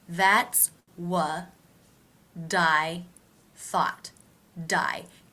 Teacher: the T here in What comes between two vowel Sounds so We're going to pronounce it like a d that's what die thought die connecting it to the word I